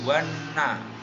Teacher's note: alif lam yang dibaca tidak jelas karena langsung dimasukkan ke dalam huruf nun, membaca menjadi wana, itu lam samsiah, lamnya tidak dibaca.